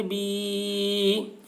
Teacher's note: یا مدہ ہوا اس لیے یا مدہ کو ایک الف کے برابر کھینچ کر پڑھیں گے